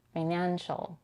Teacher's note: It's a weak, shorter I because the syllable is unstressed, financial. The second syllable is stressed. Here we have the vowel A as in cat